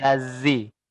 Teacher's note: Tubuh lidahnya itu bergesekan dengan langit-langit. Jadi seolah-olah itu bukan ladzi, tapi seolah-olah menggunakan huruf zai, yaitu siratal ladzi, lazi ya, ada z-nya, lazi.